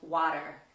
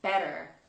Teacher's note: The next sound we're going to look at is the T sound, particularly when T appears in the middle of the word. In some cases you'll hear it sounded like a D in America.